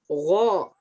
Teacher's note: huruf gho ini dijalankan, suaranya dialirkan. Gho, jadi nggak boleh go gitu, nggak boleh, salah.